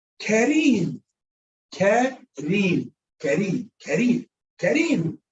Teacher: that's muraqqaqa, that's pronounced soft because of the kasra